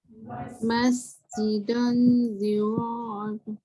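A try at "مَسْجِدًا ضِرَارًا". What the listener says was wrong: Jangan baca dong tak. Masjidan, dah tu masih lagi nipis. Masjidan diraran.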